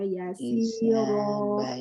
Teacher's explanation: jadi yasiro itu jangan ada yang masuk hidung, terutama ya-nya. Jadi Oh, jangan masuk hidung.